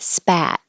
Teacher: This is the A. Your jaw is very open, tongue very flat.